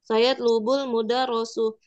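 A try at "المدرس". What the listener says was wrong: Mudaris, mudaris. Bukan mudaros.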